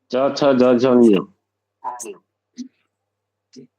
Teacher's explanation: तालु है उसका स्थान